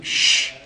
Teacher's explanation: هذه صفة التفشي هي في حرف واحد، وهي تفشي، يتفشى فيها الهواء